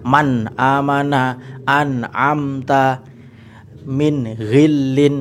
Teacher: bacaan idhar yang memang dipukul rata semua jelas nun mati dan tanwinnya. Dipukul rata dalam artian dibaca N semua.